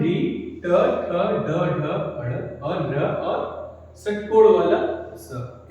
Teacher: इन सब का उच्चारण स्थान क्या है, मूर्धा।